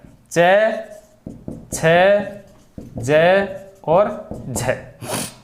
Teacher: स्पर्श के बाद में जो स्पर्श है वो इस प्रकार से एकदम से हटता है कि बाद वाला जो भाग है, उच्चारण का बाद वाला भाग है, वो क्या हो जाता है, संघर्षी हो जाता है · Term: स्पर्शी संघर्षी